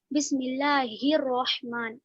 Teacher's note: را پر زبر ہے، را کو موٹا پڑھیں گے